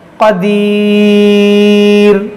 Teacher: جب وقف کریں گے تو اس دو پیش کو ساکن کر دیں گے تو یہاں مد عارض ہوگا